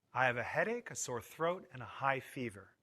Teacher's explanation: use Rising intonation on each item before the last item in the list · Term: intonation of lists